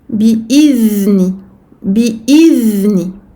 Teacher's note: dhal, attention à respecter ar-rakhawa, le temps d'écoulement du son pour la lettre dhal sakina